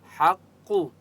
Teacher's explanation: क़ाफ को मोटा पढ़ेंगे मुस्तआलिया की वजह से, ठीक है, और हा की आवाज़ हलक से निकालेंगे।